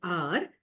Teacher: Then we have the frictionless continuant R, which is actually called a post-alveolar sound.